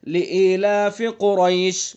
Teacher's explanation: یہ ایک الف ہے تو بہتر یہ ہے کہ اس کو ایک الف کھینچا جائے، لیکن 5 الف تک بھی کھینچنے کی اجازت ہے. آپ جیسی قرات کریں گے اس کے مطابق آپ اس مقدار کو کر سکتے ہیں، کھینچ سکتے ہیں. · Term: مد لین عارض وقفی